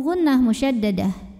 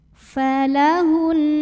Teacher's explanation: Cara bacanya dengung. Bunyi N-nya tahan sampai ada getaran halus ke hidung.